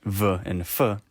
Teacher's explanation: Labiodentals are pronounced with the bottom lip and the top teeth. Sounds like v and f are pretty common labiodentals.